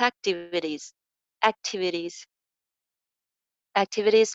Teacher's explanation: important एक्टिविटीज, एक्टिविटीज, एक्टिविटीज में flap टी है